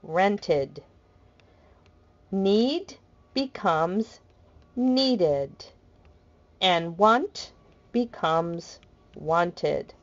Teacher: when you add Ed to a word that ends in a d d sound or TT sound and in this case the e makes an additional syllable pronounced ID